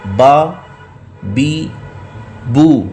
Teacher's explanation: جب آپ با ادا کریں گے تو دونوں ہونٹوں کا جو تر حصہ ہے وہ آپس میں مل جائے گا۔ اب ہونٹ ایک باہر ہوتے ہیں، ایک تھوڑے سے اندر ہوتے ہیں، جو باہر ہیں وہ خشک ہیں اور جو تھوڑے سے اندر ہیں وہ تر حصہ ہے۔ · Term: حرف با